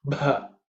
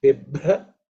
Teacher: The bha is also fourth letter in the pa varga, so it has to be aspirated.